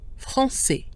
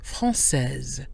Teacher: Because S is followed by E here, we pronounce it. AI followed by a pronounced S gives us the open E sound